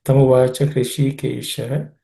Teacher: In the word Hrishikesha, the Hrishi is cerebral sha, so the tip of the tongue should point upwards towards the roof of the mouth.